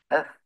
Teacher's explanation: Ini huruf tha mahmus iaitu ada hams pada hurufnya. Maka ada banyak angin pada dia.